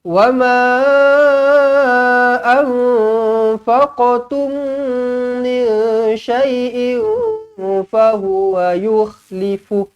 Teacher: Wa ma, panjang di sini 4 ataupun 5 harakat. Anfaqtum, nun kosong bertemu fa, ikhfa hakiki.